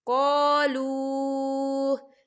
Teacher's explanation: या देखिए यहाँ पर लू वाव साकिन है, वाव साकिन से पहले पेश है, तो यहाँ पर वाव मद्दा भी हो रहा है और इसमें मद भी है, तो हम इसे 3 हरकत के बराबर खींचेंगे।